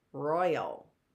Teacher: is the stress on the Roy Royal or is the stress on the ow Royale it's on the Roy Royal